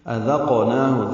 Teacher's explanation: آ رہا ہے، اظہار حلقی۔ أَذَقْنَاهُ ذال نرمی سے پڑھیں گے، قاف ساکن پہ قلقلہ کریں گے، نون کو 2 حرکات لمبا کریں گے